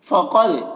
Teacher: قاف کو پر پڑھیں گے، دال میں قلقلہ کریں گے